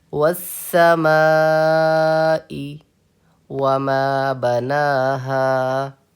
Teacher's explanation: مد متصل کو 2 سے 4 الف کے برابر کھینچ کے پڑھنا چاہیے